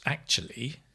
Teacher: the actually is a falling rising intonation